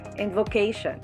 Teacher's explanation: syllable vo second syllable k third syllable and sean last syllable the stress is in the third syllable